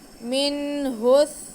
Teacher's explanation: اس پہ ہم نون کو بھی واضح کر کے پڑھیں گے اور ہا کو بھی، اور ہا کا پیش ہم آگے سا کے ساتھ ملائیں گے کیونکہ سا ساکن ہے. سا میں سیٹی کی آواز بالکل بھی نہیں آئے گی